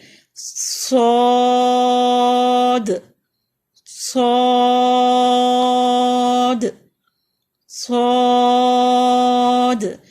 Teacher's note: سین میں تیز سیٹی ہوتی ہے اور صاد میں موٹی سیٹی ہوتی ہے، اور اس کی اتنی کلیئر سیٹی نہیں ہوتی لیکن موٹی سیٹی ہوتی ہے.